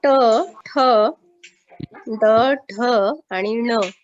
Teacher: आपल्या जिभेचं जे टोक आहे ते जिभेचं टोक आपल्या टाळूला स्पर्श होत असतं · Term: मूर्धन्य